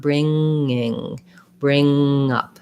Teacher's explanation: So I go right from my NG gliding into the next vowel. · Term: NG sound